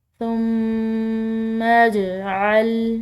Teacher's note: لام کو ہم نے لمبا ادا کیا ہے، إِلَيْكَ ثُمَّ اجْعَلْ، میم مشدد ہے، مشدد میم پر غنہ کریں گے